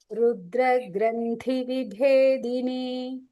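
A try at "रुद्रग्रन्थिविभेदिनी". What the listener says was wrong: That T is Mahaprana. Okay, just remember that. It's okay.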